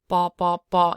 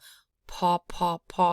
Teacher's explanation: right so that's a BL that's a blended p in it the blend is the aspiration so there's air instead of a hard p